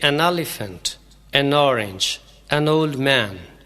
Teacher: این کو بولتے وقت چھوٹی سی الف کی آواز دے کر این کو آگے والے لفظ کے ساتھ ہی ملا دیتے ہیں